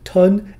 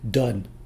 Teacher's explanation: o in these two did one sound longer than the other english vowels regularly lengthen before voiced consonants such as d this shows how a sound's environment may affect how you pronounce